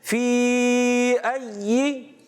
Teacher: या को मुशद्दद रखेंगे और ज़ेर को बगैर खींचे अदा करेंगे